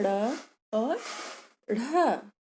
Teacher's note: इन्हें द्विगुण कहते हैं क्योंकि ड और ढ जो मूर्धन्य वर्ग में है, उसके अतिरिक्त ड़ और ढ़ का उच्चारण मूर्धा और निचले तालु से मिलकर होता है, इसलिए उन्हें द्विगुण व्यंजन कहते हैं।